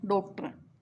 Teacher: यह आ और ओ के बीच की ध्वनि है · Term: आगत ध्वनि